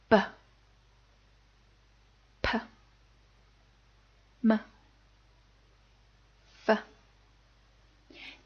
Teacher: they use both your top and bottom lip to pronounce them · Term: labial initials